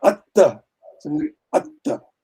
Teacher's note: The first tha is unreleased, and it's only the second tha that opens up. Mm-hmm. So what that means is that closure you hold for a longer time, and then you open up. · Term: abhinidhana